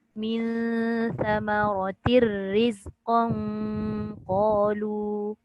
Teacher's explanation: dekat tanwin dengan ra tu dia masuk ra tapi tidak ada gunnah, tak ada dengung.